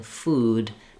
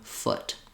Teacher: some rounding versus the ooh is more of tense vowel and you're going to have more pursed lips for the ooh in food than the uh in foot